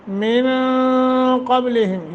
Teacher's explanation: من قبلہم یہاں اخفا ہوگا، نون ساکن کے بعد قاف ہے، قاف کو موٹا کرنا ہے ، یہ حروف اخفا میں سے ہے، من اخفا کریں گے،